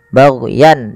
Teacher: ada izhar halqi yaitu suara tanwinnya dibaca dengan jelas karena bertemu dengan hamzah bagyan dan tidak boleh ada penahanan tidak boleh ada penahanan kemudian